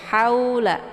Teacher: Cara bacanya cukup dilunakkan saja bacaannya. Haula tanpa harus dipanjangkan. Kemudian la ini dibaca lembut ya, la. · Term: harf lain